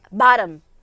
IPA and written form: bɒtəm (bottom)